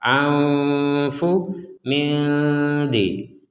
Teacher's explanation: nun sukun bertemu dal, maka kita membacanya dengan samar juga seperti nun sukun bertemu fa. Anfu mildi, dibaca dengan samar.